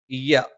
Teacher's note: ഇയ്യ നാവിന്റെ മധ്യഭാഗം മേലെ അണ്ണാക്കിലാണ്